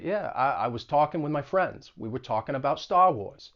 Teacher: with the Boston accent, often there's going to be an upward inflection at the end of sentences